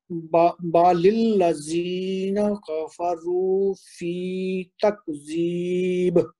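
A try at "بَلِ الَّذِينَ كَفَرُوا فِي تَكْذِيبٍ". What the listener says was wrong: یہ جو تکذیب ہے نا یہ کاف کا ہمس کرنے کی کوشش کریں. تکذیب.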